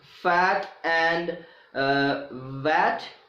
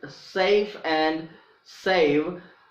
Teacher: the initial sounds of the words fat and vat, and the final sounds in the words safe and save are labiodentals. Okay, f is voiceless, v is voiced.